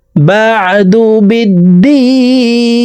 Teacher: ইল্লাল্লাযীনা আমানু ওয়া আমিলুস সালিহাতি ফালাহুম আজরুন গায়রু মামনুন ফামা ইউকাযযিবুকা বা'দু বিদ্দীন। বা'দু আইনকে হলকের মধ্যখান থেকে উচ্চারণ করব। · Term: আইনের মাখরাজ